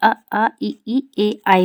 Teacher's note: आवृत मुखी है इसमें गोलाकार नहीं होगा